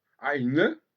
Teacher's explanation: Et l'allemand a bien compris ça, parce que quand il dit eine, eh bien, il insiste sur le E final, ce qui fait qu'il en fait une voyelle